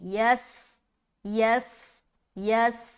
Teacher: या को जब सीन से मिलाएंगे आवाज सिटी वाली झलकेगी। · یا کو جب سین سے ملائیں گے آواز سیٹی والی جھلکے گی